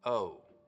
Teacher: instead of it starting very open ow it's starting from somewhere in the middle of the mouth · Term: Canadian raising